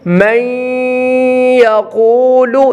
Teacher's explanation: نون ساکن کے بعد یا ہے، اب یہاں کون سا ادغام ہوگا؟ ادغام مع الغنہ، غنے کے ساتھ ادغام ہوگا